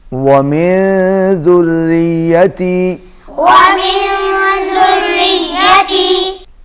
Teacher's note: نون پر اخفا ہوگا، آواز ناک میں جائے گی